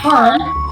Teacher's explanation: The second one, we have labiodactyl, produced with the lower lip touching the upper front teeth